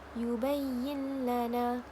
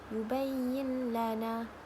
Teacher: Nun mati bertemu dengan lam, tiada dengung. Kita baca macam biasa je. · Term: idgham bila ghunnah